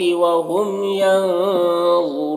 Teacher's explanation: ینظرون نون میں اخفا ہوگا، نون کی آواز کو ناک میں چھپا کر پڑھیں گے. غا حروف مستعلیہ میں سے پر پڑھیں گے، را کے اوپر پیش ہے، را کو پر پڑھیں گے، اور یہاں پر واو مدہ ہے، وقف کریں گے تو مد عارض وقفی ہوگا.